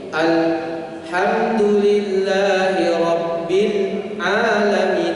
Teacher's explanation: Jadi kita waqaf, berhenti tanpa menarik nafas. Itu namanya saktah.